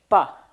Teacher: we're going to work on the bilabial voice plosive